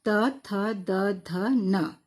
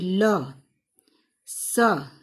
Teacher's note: त वर्ग अर्थात त थ द ध न। ठीक है? फिर ल, स, इन सब का उच्चारण दांत की सहायता से होता है